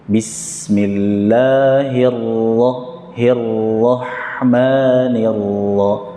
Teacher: Tetap berikan haknya ra, tapi disembunyikan takrir.